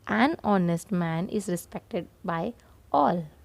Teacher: here H is silent and the sound is O